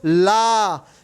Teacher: जैसे आपको बोलो ला, ठीक है ना, ला में क्या हो रहा है, आपकी जीभ देखो ऊपर मसूड़ों को टच कर जा रही है, हवा जो है आपकी पार्श्व बाहर निकल के आ रही है, इसीलिए ला को हम पार्श्विक व्यंजन की श्रेणियों में डालते हैं। · जिह्वा का अगला भाग मसूड़ों को टच करता है और हवा पार्श्व के आसपास से निकलती है, उसे पार्श्विक व्यंजन कहते हैं।